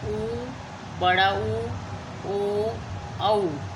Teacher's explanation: हम जब बोलते हैं तो हमारा जो होंठ है वो बिल्कुल कैसे हो जाते हैं? गोल हो जाते हैं। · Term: वृत्ताकार